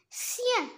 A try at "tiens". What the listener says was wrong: non. Tiens. alors T se prononce T. ما نقولش هنايا sien mais نقول tiens. Tiens.